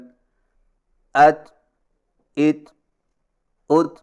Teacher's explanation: اور تا کی ادائیگی کا صحیح طریقہ یہ ہے کہ زبان کی نوک کو ثنائے اولیہ کی جڑ پر مضبوطی سے اس طرح لگائیں کہ آواز کے سختی سے رکنے کے فوراً بعد معمولی سی گھساہٹ ہو، یا یوں سمجھیں کہ زبان کی نوک تالو پر سختی سے لگنے کے فوراً بعد معمولی سی گھساہٹ ہو۔